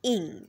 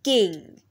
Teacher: D sound will be there and then there will be diff thong like in go and e sound and ing sound at the end which is a nasal sound ing like in king